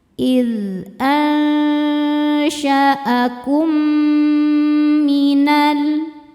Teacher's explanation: Sebab mim sukun bertemu dengan mim hidup ya. Cara bacanya mim yang sukun dileburkan ke mim kedua disertai dengung. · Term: idgham mimi